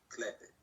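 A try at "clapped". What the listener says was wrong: No. There's no E sound.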